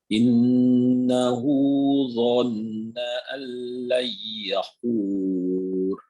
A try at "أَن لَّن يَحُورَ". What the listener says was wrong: Hur, ro-nya tebalkan Pak. Allan yahur. Hanya pada kalimat ro-nya. Wur. Nah, dia pada saat difakofkan dia tebal. Wur. Nah, sama seperti kita kata Allahu Akbar. Bar bukan Allahu Akbar, tapi bar. Ya ini ya hur.